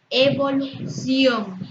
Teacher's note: es una palabra aguda, su sílaba tónica es la última y sí lleva tilde porque termina en N.